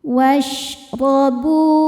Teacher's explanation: Sebab ada wau sukun yang sebelumnya berbaris dommah. Cara bacanya huruf ba dipanjangkan dua harakat. Wasrobu hani ni hukumnya adalah mad wajib muttasil. · Huruf ro dibaca secara tafkhim karena ro berharokat fathah. Cara bacanya ro dibaca tebal. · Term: mad thobi'i zahiri